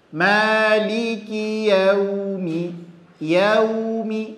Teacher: Maka kalau ada nanti berjumpa waw mati, maka mesti dimonyongkan kedua bibir sehingga bunyi vokalnya adalah huruf u